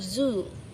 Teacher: Try to feel your throat when you say zoo. You'll feel the vibration.